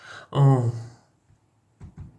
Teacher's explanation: It sounds like somewhat like the French bon or Portuguese pom, but closer to a nasal O sound, like on said through the nose